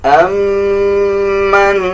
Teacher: میم کے اوپر شد ہے، غنہ کیا جائے گا